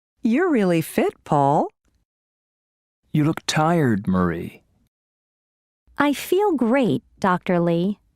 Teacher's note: with direct address there is usually falling intonation and a pause before the name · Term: intonation with direct address